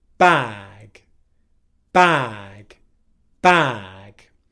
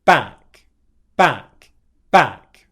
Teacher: the length of a vowel sound before a voiceless consonant gets shortened